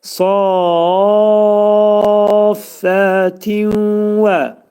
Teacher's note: tənvində olan nun səsi vəvə dəyir və idğam mə'al gunnə olur. Nun hərfi vəvə çevrilir.